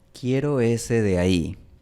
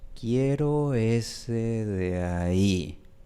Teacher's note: Aquí tenemos una D en medio de dos vocales y en este contexto puede ser súper suave.